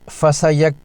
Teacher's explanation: فا پر زبر، سین پر زبر اور یا پر بھی زبر ہے۔ کاف ساکن ہے لیکن کاف کش والا حروف قلقلہ میں شامل نہیں، اس لیے یہاں قلقلہ نہیں ہوگا۔ کاف ساکنہ باریک حرف ہے، پڑھیں فسیک یا مدہ فی۔